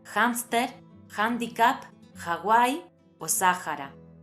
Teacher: en algunas palabras procedentes de otros idiomas es habitual pronunciarla como una j aspirada